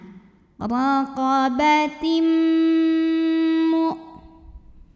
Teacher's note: Idgham Bighunnah karena ada tanwin kasrah yang menghadapi huruf mim maka tanwinnya masukkan ke mim jadi kita bunyiinnya m sambil ditahan